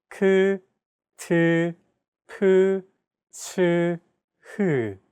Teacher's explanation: Aspirated consonant sounds, on the other hand, have an added turbulent sound.